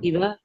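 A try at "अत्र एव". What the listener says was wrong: iva, atra eva, not iva, atra eva, iha eva, atra eva, iha eva.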